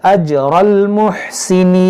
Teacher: نصیب برحمتنا من نشاء ولا نضيع اجر المحسنین، دیکھیں اجر اج جی میں قلقلہ کریں گے اور را کو موٹا کریں گے